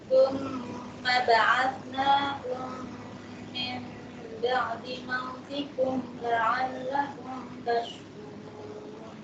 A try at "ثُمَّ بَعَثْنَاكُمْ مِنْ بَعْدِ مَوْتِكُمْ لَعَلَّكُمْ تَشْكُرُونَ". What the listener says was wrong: Krunya kurang panjang. Summa tajwidnya. Summa ba'atsnakum min ba'di mautikum la'allakum tashkurun. Summa.